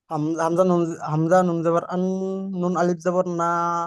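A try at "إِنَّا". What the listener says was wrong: আওয়াজ যাবার পরে জের আছে, জের আছে, আল্লাহ এখানে জের আছে, হামজা নুন জের আছে, হামজা নুন জাবার, তারপরে জাবার আছে,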